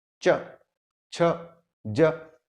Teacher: तालव्य वे व्यंजन होंगे जिनका उच्चारण करते समय आपके तालू पे आघात लगेगा। तालू आपके दांत का जो आखिरी हिस्सा है उसे ठीक ऊपर का हिस्सा, जैसे च, छ, ज।